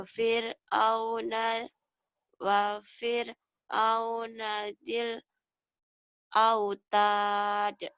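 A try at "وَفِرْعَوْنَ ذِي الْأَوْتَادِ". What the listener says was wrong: wa fir'auna dzil autad. Kau tuh bacanya tuh sudah bisa, cuman nadanya tuh kayak nada yang maaf ya, kayak nggak pede gitu. Seperti, kan harusnya ini Budi lagi sekolah. Ini Budi lagi sekolah. Jadi penyampaian. Ya coba ya artikulasinya dibagusin karena kau sudah bagus, sudah pinter kok.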